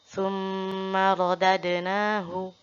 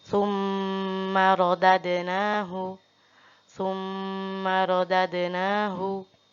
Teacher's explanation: Selanjutnya, summa radadnahu. Mim juga, mim tersebut ada harokat tasydidnya. Maka sama harus dibaca atau ditahan selama 3 harokat